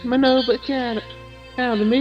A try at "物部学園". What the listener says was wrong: Remember, there's in the academy's name, there's another no. It's Mononobe Academy.